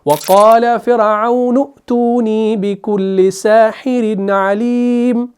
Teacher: نون پیش کو اس حمزہ ساکن کے ساتھ ملائیں گے نا تو جھٹکے کے ساتھ اس کو پڑھا جائے گا تحقیق کے ساتھ